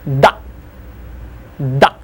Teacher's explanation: When I say da, my tongue on top of my upper teeth, I just push it away